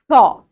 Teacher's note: তারপর বলছি তালব্য স, তালব্য স, ঠিকভাবে স যদি উচ্চারণ করো, জিভটা উল্টে গিয়ে ঠিক উপরের তালুতে ঠেকবে